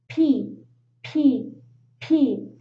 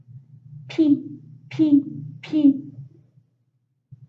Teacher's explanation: that's why the letter p is a voiceless sound in fact near your lips at the front of your mouth the p sound doesn't come from your throat · If you put your hand in your throat, you will notice that your vocal cords don't vibrate.